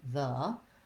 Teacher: it's unstressed and short we have the voice th and the schwa so it sounds like the oftentimes people will pronounce the the